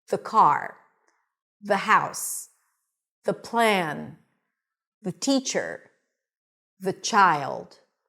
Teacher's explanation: So the first thing that we need to remember is that we stick the tongue out for the TH, and it's a voiced TH. Now, because it's a word that is usually pronounced really quickly, sometimes you don't fully stick the tongue out.